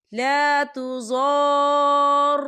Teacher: اس کی مقدار 6 حرکت کے برابر ہوتی ہے، تو ہم اسے 6 حرکت کے برابر کھینچ کے پڑھیں گے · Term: مد لازم